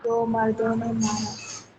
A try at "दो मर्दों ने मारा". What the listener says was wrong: मर्दों पढ़िएगा, मुर्दों मत पढ़िए, तो गलत बात है, बेचारे प्रैक्टिकली मुर्दे ही हैं जी, तुम दो मर्दों ने,